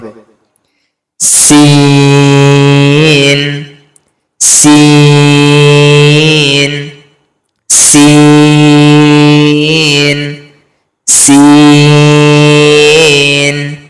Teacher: আর সিন উচ্চারণ করার সময় সিনকে আমরা পাতলা করব। আর সিন তিন আলিফ পরিমাণ টান হবে। সিন সিন সিন সিন এভাবে পড়তে হবে।